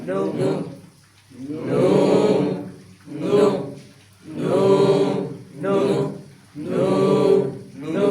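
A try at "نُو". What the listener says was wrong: এখানে টানলেন না কেন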